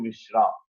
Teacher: So with a long vowel because of English influence.